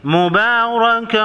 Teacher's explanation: با کے اوپر کڑا زبر ہے، ایک الف کے مقدار یعنی 1 سیکنڈ لمبا کریں گے، اور تنوین کے بعد واو ہے، ادغام مع غنہ ہوگا۔